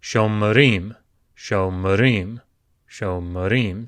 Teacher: Their vowel sounds have almost disappeared because the accent has shifted away from them. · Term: vocal Shevas